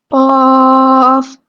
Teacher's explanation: ٹھیک ہے، جو قاف ہے، قاف کینچی والا قاف یا نقطوں والا قاف پورا موٹا پڑا جاتا ہے، اور اس کا مخرج کیا ہے، یعنی وہ کہاں سے نکلتا ہے، زبان کی جڑ جب کوے کے قریب طرف تالو سے لگتی ہے تو وہاں سے قاف ادا ہوتا ہے